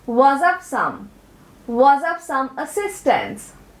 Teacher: ये structure words है जिसका मतलब है कि आप इन वर्ड्स पर जोर नहीं देते हैं. Another feature you might have missed is the linking between was and of.